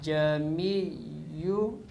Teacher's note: تسہیل کے معنی ہے نرمی کرنا، اور یہاں مراد یہ ہے کہ دوسرے حمزہ کو نرم کر کے خود حمزہ کے اور الف کے مخرج کے درمیان ادا کرنا